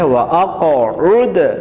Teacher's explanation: اس کے بعد وقوتہ میں قاف کو موٹا پڑھنا ہے، اقوم، اقوم بھی قاف کو موٹا پڑھنا ہے، وَأَقْعُدْ، وَأَقْعُدْ میں بھی موٹا قاف ہے اور قاف میں تھوڑا سا باؤنس یا جمپ یعنی قلقلہ بھی کرنا ہے